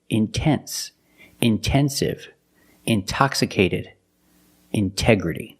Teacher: the stress is after the NT in these words. So we pronounce the T as a pure T.